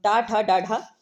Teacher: जो ठ शब्द का उच्चारण स्थान है मूर्धा है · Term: मूर्धन्य